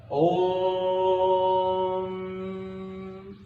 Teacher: प्लुत स्वर जिसको बोलने में ह्रस्व और दीर्घ से अधिक समय लगता है